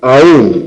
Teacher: Que hasta aquí tenemos monosílabos, estos ya no son monosílabos, porque aún, cuando es tónica, el acento recae sobre la vocal más cerrada, y por lo tanto es bisílaba